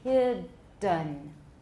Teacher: Between the D and the N, we have what? A schwa.